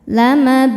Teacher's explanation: Mad tabi'inya waw sukun sebelumnya dhammah, huruf yang disukunkannya nun. Maka sa-nya ini panjang, boleh 2 atau 4 atau 6 harokat asal konsisten dalam sekali baca. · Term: mad arid li sukun